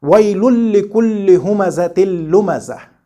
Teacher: But in the second example, the ghunna is not present while we do the merger or idgham